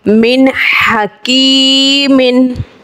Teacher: मीम नून ज़ेर मिन, हा ज़बर हा, मिन हा, काफ या ज़ेर की, मिन हकी, मीम दो ज़ेर मिन, मिन हकीमिन, नून साकिन के बाद हा है यानी हुर्फ़ हल्की का, इज़हार का कायदा होगा और गुना नहीं करेंगे। यहाँ पे या साकिन से पहले ज़ेर है, काफ के नीचे जो ज़ेर है यानी या मद्दा का कायदा है, तो या मद्दा को हम एक अलिफ खींचेंगे।